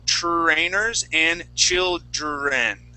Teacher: we don't want to think of them as two different sounds it's TR